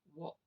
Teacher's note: So in actual fact, in the word walked, the E is completely silent and is replaced by a T sound